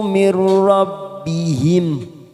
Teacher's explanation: Warna oranye pada huruf nun sukun bertemu dengan huruf ro, namanya idgham bila gunnah, hanya masuk tanpa mendengung, tanpa ditekan lama-lama.